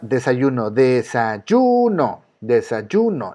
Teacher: La sílaba que suena más fuerte es yu